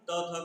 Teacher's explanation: और इसका उच्चारण दांत से होता है। बिना दांत में जीभ का स्पर्श कराए हम त, थ का उच्चारण कर ही नहीं पाएंगे, इसलिए इसका उच्चारण स्थान दांत से है।